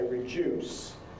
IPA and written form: rɪˈʤuːs (reduce)